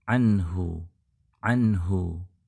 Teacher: mati atau tanwin ini berhadapan dengan 5 huruf tenggorokan yang lain bunyi n-nya tegas satu ketukan tanpa penambahan tanpa disamarkan · Nun mati ketemu ha, tentunya harus dibaca izhar, tidak disamarkan, tidak pula ditambahkan gunnahnya.